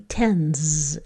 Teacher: the S will just keep its motor on and that will be tens and it has that z sound